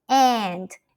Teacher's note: the a sound is nasalized, at least in many accents, meaning that it comes from the nose